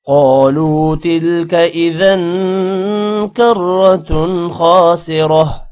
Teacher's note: کرۃ خاسرہ، کرۃ، را موٹا ہوگا، تن، خا آ رہا ہے، خا حروف حلقی ہے جس کی وجہ سے تن پر غنہ نہیں ہوگا